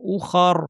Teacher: উখার বলার সময় উ শক্ত, খ র দুইটাই ভারী, রতে সুকুন দিয়ে থেমে যাব।